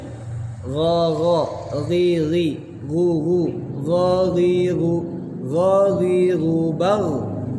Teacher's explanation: Tapi kalau ghain keluarnya dari tenggorokan. Seperti kha, di satu makhraj.